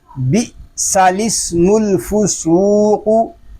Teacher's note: سین کو ہم الگ پڑھ رہے ہیں اور لام کو پھر آگے سین کے ساتھ ملا رہے ہیں